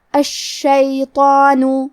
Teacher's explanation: کلمت الشیطان میں شین پہ تشدید ہے تو ہمیں 2 حرف کے برابر شین کو پڑھنا ہے · یہاں حرف الطو ہے، طو حروف التفخیم میں سے ہے تو ہم حرف الطو کو بھاری آواز میں پڑھیں گے اور کیونکہ اس پہ مد الف ہے لہذا ہمیں مد الف کو بھی بھاری آواز میں پڑھنا ہے